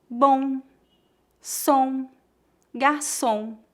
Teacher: Note que não tocamos os lábios para pronunciar o M. Não dizemos bom, e sim bom.